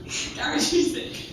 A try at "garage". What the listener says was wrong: Sounds like you're saying carriage. Or some people say garage, but I say garage.